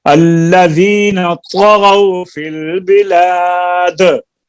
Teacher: بلاد میں قلقلہ اور طا کو صحیح کریں, فل کریں, تفخیم پیدا کریں